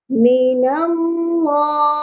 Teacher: اللہ کے لام سے پہلے زبر ہے، اسی لیے اللہ کے لام کو موٹا کر کے پڑھا جائے گا، اور اس کو ایک الف کے برابر بھی لازمی کھینچنا ہے کیونکہ لام کے اوپر کھڑی زبر ہے۔